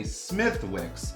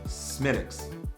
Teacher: It looks like it should say Smithwicks, but because the Irish language does not pronounce the TH sound, it is Smidx.